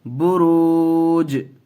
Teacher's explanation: بروج جیم حرف قلقلہ میں سے ہے، اور اس کے اوپر جب ہم جزم دے دیں گے تو قلقلہ ہو جائے گا، تو اس لیے قلقلہ بھی ہوگا، اور وقف کرتے وقت حرکت کی آواز نہیں آئے گی، جیم کی آواز آئے گی